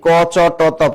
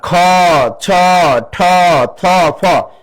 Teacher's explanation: তো এটা অল্প প্রাণ, এটা মহাপ্রাণ, অল্প প্রাণ, মহাপ্রাণ, অল্প প্রাণ, মহাপ্রাণ, অল্প প্রাণ, অর্থাৎ এগুলো শ্বাস বেশি লাগে উচ্চারণে, এই জন্য এগুলো হলো মহাপ্রাণ